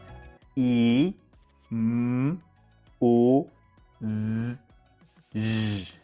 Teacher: voiced sounds such as vowels and certain consonants like among others the vocal chords come closer together but not fully closed as air from the lungs is pushed through the narrow gap